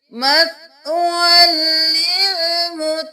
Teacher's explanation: سورۃ الزمر کی آیت نمبر 60 میں دیکھ لیجئے مَثْوًى لِلْمُتَكَبِّرِينَ، یہاں پر مسمن لل نہیں کریں گے، یہاں پر واو کو لام کے ساتھ ملائیں گے، تشدید ہے، یا خالی ہے اس کو چھوڑ دیں گے، واو دو زبر لام ول۔ یہاں پر ادغام بلا غنہ کریں گے، ہم ملائیں گے لیکن بغیر غنہ کے